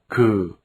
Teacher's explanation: The grapheme Ku. is a slightly aspirated velar sound. This sound is between the English g and k.